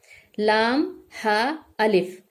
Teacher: یہ چاروں ہی ہا ہے, ٹھیک ہے نا. وہ بڑے والا حلق والا ہا نہیں نکالنا ہے, اس کو آپ کو درمیان سے نکالنا ہے